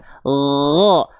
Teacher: kalau huruf ghain dia hanya mengalir suara tanpa mengalir nafas